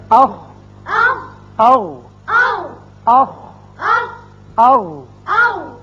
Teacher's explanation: دونوں مخارج میں آواز حلق کے اوپر والے حصے میں جا کر رکی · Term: اقصی حلق